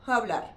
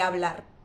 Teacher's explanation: algunas de las hs las pronuncian como si fuera una pequeña j, pero muy ligera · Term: aspiran la h, aspiran la H